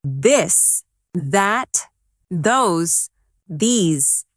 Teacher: Now practice the softer version of the where you let your tongue touch your teeth lightly but use your voice